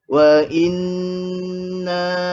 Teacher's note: Wa inna, dan kena dengungkan nun yang bersabtu ni. Kena dengungkan. Sebanyak 2 harakat. Jelaskanlah dengung dia.